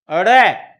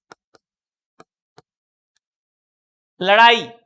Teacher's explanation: ये है उत्क्षिप्त व्यंजन, ये ऊपर की तरफ जिह्वा उठेगी, उठने के बाद बाहर की ओर फेंकी जाएगी, ड़ जिह्वा उठती है और बाहर की ओर फेंकी जाती है, ड़।